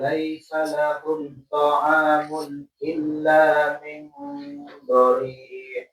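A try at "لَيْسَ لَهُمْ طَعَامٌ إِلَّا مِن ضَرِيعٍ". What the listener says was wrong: Hati-hati ya, tawasudnya masih kejeda. Laisa lahum ta'amun ta'amun jangan ta'amun illa. Tadi masih kesetak dia.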